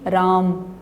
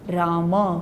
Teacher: म बोलने के बाद होठ खोलेंगे, जिससे अ की ध्वनि बाहर निकलेगी और वर्ण और उस शब्द का उच्चारण सही होगा।